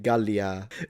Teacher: Long vowel at the end for phonemic vowel length maniacs like me